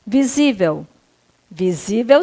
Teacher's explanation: É uma paroxítona, a sílaba tônica aí do acento é a penúltima sílaba